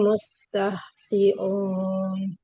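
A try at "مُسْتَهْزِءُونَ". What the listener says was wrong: Oke, coba huruf za tidak siun tapi zi. Ziun, zu. Mustahziun. Mustahzi. Huruf za hati-hati jangan sampai ada aliran nafasnya.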